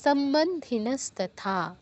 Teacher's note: এই লাইনে শুধু থাতে গিয়ে দীর্ঘ হবে বাকিটা দ্রুত বলতে হবে